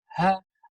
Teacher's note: le ha qui se trouve au fond de la gorge, lorsqu'on prononce ha, Allah, eh bien, il se trouve, c'est la dernière lettre qui se trouve au niveau des sorties des lettres dans la gorge.